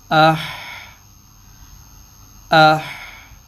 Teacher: اب یہ قلقلہ نہیں کیا، آواز چل رہی ہے